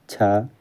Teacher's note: तालव्य महाप्राण अघोष व्यंजन वर्ण का उदाहरण है।